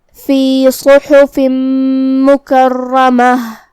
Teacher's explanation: हा को हम हलक के दरमियान वाले हिस्से से अदा करेंगे